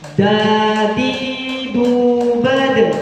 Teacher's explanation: huruf da ini juga terdapat pada hukum Qalqalah yang artinya harus dipantulkan · ujung lidah menyentuh gigi seri bagian atas yang berdekatan dengan busi